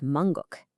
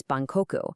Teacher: where the m shifts to a b sound